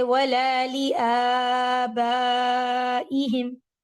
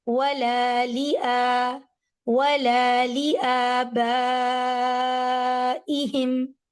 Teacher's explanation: جتنا ولا کو ٹائم دیا اتنا ہی لِآ کو ٹائم دینا ہے